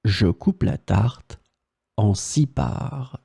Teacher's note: with the S in the end, that is totally mute, you don't pronounce it